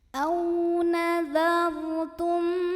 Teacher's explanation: Kemudian ada ra sukun yang dibaca secara tafkhim karena huruf sebelumnya dal barisnya fathah. Maka ra-nya dibunyikan ditebalkan dengan cara mengangkat pangkal lidah kita